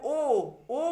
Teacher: কি ও এর উচ্চারণে ঠোঁটের অবস্থানে দেখতে পাচ্ছি যে কুঞ্চিত হচ্ছে ঠোঁট কুঞ্চিত হচ্ছে এবং পশ্চাৎ পেছনের দিকে একটা টান আমরা অনুভব করছি আর জিউভা হচ্ছে উচ্চ আর মধ্যস্থানের মধ্যবর্তী স্থানে থাকছে আর মুখ